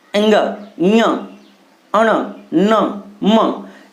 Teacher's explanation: ऐसे लग रहा है कि मैं नाक से इनका उच्चारण हो रहा है, मतलब कुछ नाक पे जोर पड़ रहा है ना, नाक से निकल रहा है। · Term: नासिक